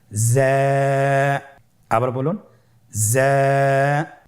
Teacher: যা হরফটির মাখরাজ আপনারা দেখতে পাচ্ছেন জিহ্বার আগা সামনের নিচের 2 দাঁতের পেট ও আগার সঙ্গে লাগিয়ে উচ্চারিত হয়।